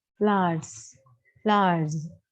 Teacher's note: r is a voiced. So we get z sound.